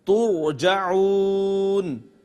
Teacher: ترجعون ناظرین را کو پر کر کے پڑھیں گے اور واو کا ما قبل آپ دیکھیں پیش ہے یعنی ضمہ ہے تو اس واو کو بھی پر کر کے پڑھیں گے۔